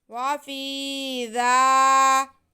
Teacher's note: وَيَسْتَحْيُونَ نِسَاءَكُمْ، وَيَسْتَحْيُونَ نِسَاءَكُمْ، وَفِي ذَلِكُمْ، واو پہ زبر، فا کے نیچے زیر اور یا ساکن، یا ساکن سے پہلے زیر ہو تو یا مدہ ہوتی ہے، اس لیے فا کی آواز کو ہم کھینچ کے پڑھیں گے۔ وافی، آگے زال پہ کھڑا زبر ہے جو کہ الف مدہ کے قائم مقام ہے، اسے بھی ہم کھینچیں گے